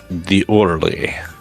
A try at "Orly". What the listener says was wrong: It's just Orly.